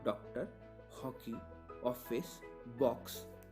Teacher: उच्चारण आ और ओ के बीच का होता है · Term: अर्धचंद्र